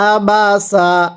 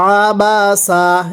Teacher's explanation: এই আইনটা উচ্চারণের সময় গলার মধ্যে হালকা চাপ দিয়ে পড়তে হবে